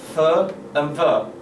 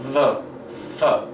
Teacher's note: there is not a closure of my upper teeth and lower lip, okay? There's still a little bit of opening, and the air goes through with friction. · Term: fricative